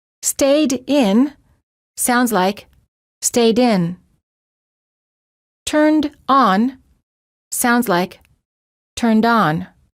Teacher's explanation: the final T and D sounds are much easier to pronounce if they're connected to the vowel that follows it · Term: linking